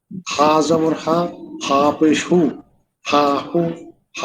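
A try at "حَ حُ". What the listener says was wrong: অনেকটাই হচ্ছে, আর একটু গলার ভেতর চাপ দিয়ে হা হু এভাবে, হা হু।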